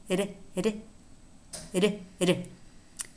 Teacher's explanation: the tap it's a single tap against the alveolar Ridge